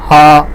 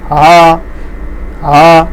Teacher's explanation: अतिकंठ्य में ह है। घाँटीको फेदबाट उच्चारण वर्ण हुने भएकोले यसलाई अतिकंठ्य वर्ण भनिन्छ